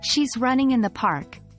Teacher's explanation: the words running and park are stressed because they are the content words